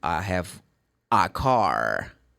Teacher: if you were in the States, people are going to pronounce the R